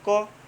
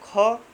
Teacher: अगर कम वायु निकलेगी तो कम समय लगेगा, ज़्यादा वायु निकलेगी तो ज़्यादा समय लगेगा। देखिए अगर आप बोलते हैं क तो हल्का सा वायु निकलती है और कम समय लगता है। अगर बोलेंगे आप ख तो उसमें ज़्यादा समय लगता है और ज़्यादा वायु बाहर निकलती है।